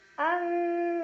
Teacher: Faqala ada iqlab karena ada nun sukun yang bertemu dengan huruf ba. Cara bacanya bunyi nun sukun diganti dengan bunyi mim sukun. Jadi asalnya an menjadi am sambil berdengung.